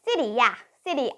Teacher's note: sometimes it almost sounds like R but I would say it's kind of mixture of R and D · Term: flap t